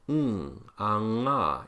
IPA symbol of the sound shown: ŋ